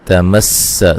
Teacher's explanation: یہاں میم ساکن کا اظہار ہے، غنہ نہیں کریں گے، قوف کو موٹا ادا کریں گے، الف مدہ ہے، یہ لو و مدہ ہے، لن یہاں نون ساکن کا اخفا ہے باریک، ٹھیک ہے۔ تمس سین کو باریک سیٹی سے ادا کریں گے